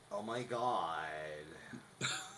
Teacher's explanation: Where you're dropping down and you get that weird drop off. It's called glottal fry, and it sounds like, oh my god.